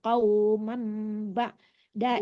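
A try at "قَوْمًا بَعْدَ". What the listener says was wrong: Kauman, kaumam ya, jangan kauman ya, itu iqlab hukumnya, jadi ditekannya ke mim.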